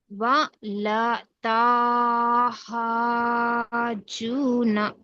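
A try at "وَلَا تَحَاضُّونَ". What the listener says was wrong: తాకు దీర్ఘం లేదు కదా. వలా తహాదూన వలా. ఇక్కడ 6 హరకాతులు ఇక్కడ తీయాలి, ఇక్కడ 2 హరకాతులే తీయాలి.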